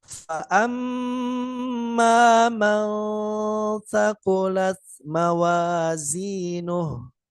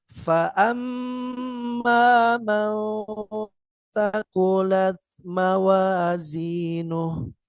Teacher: Cara membacanya seimbang antara dengung dan samarnya berbeda dengan ikhfa yang akrab.